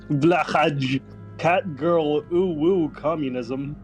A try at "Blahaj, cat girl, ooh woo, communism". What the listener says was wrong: Close. You got the tone wrong. But not bad.